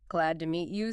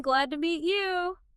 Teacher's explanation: when you say glad to meet you, you make the word you just a little bit stronger, a little louder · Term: emphasis